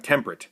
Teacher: get rid of the e in the middle of the word and you now have temperate which means the same thing but is now down to just two syllables